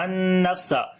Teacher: فا کے اوپر صفت ہمس کریں گے، سانس جاری ہوگا